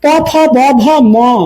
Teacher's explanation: প অল্প প্রাণ, ফ বেশি